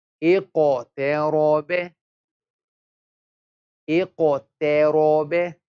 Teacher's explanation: Qaf is thick, we don't smile on the qaf. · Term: qalqal